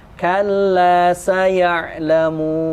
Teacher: Ingat ketika nun mati, seperti yang kemarin kita bahas di kaidah yang kedua, dia ada sifat dengung. Jadi ketika nun mati jangan langsung kalla saya'lamun. Tapi ditahan sebentar.